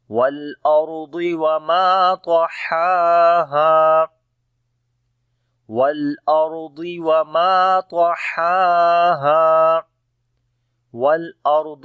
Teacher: را کو موٹا پڑھیں گے، را کے اوپر جزم ہے، اس سے پہلے زبر ہے